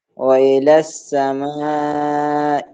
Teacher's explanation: اے نہیں بلکہ ای باریک کریں